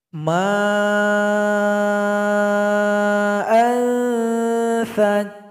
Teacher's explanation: Jadi karena ada mad asli atau mad alif berjumpa dengan hamzah, maka dipanjangkan 5 detik. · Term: mad wajib muttasil